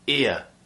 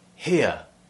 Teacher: you'll be replacing the r with a ear sound a diphthong